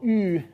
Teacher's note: the second vowel, U, is round and high and not back, that is front